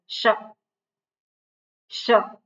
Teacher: બીજો શકાર જે શંકરનો શ, શિવ, તો એ ઉપર તાળવામાં એ અડે